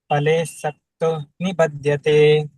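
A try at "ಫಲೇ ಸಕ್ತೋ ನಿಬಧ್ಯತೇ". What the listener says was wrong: ಪಲೆ ಪಲೆ ಪಲೆ ಅಂತಂದ್ರೆ ಏನಾಗುತ್ತೆ ದೊಡ್ಡ ಸಣ್ಣ ಪ ಆಗಿಬಿಡುತ್ತೆ ಇಲ್ಲಿ ದೊಡ್ಡ ಪ ಇದೆ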